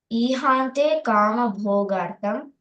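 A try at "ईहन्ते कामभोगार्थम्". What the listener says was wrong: Ihante. So that's a shorter vowel. Ihante kama bhogartham.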